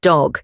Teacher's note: Letter D said D as in dog. Same as Turkish D, tongue touches the back of the teeth.